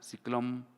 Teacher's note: Realización bilabial de N, final ante pausa